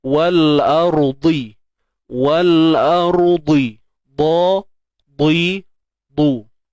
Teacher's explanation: Bila sebut dia baris bawah tuan-puan, tebal dia ni memang kekal sebab dia bersifat itbaq.